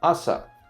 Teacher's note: Asa is high and then low